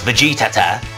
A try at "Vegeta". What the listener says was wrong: That's not his name. You're adding extra syllables, you mofo.